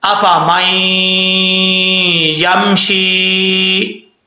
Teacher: میم کو جب یا سے ملائیں گے تو بیچ میں نون جو ہے وہ گر جائے گا۔ یہاں پہ ادغام یرملون ہو رہا ہے۔